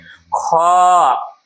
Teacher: देखिए तो अंत में ह सुनाई देता है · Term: महाप्राण